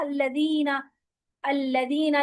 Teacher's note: जब आप पढ़ते हैं अल्लदीना, तो इसमें जाल की सीटी नहीं आती है